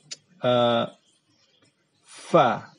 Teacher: Fa itu fa. Dia keluar dengan hams juga. Ada udara yang terdengar.